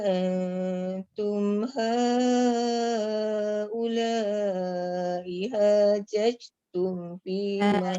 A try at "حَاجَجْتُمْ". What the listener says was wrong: Jajatum, jangan judge. Jangan bunyi angin. qalqalah tu. Hajajatum. Tak ada qalqalah. Dia bukan tak dengar. Dia bunyi judge. Itu bukan qalqalah. Tu angin.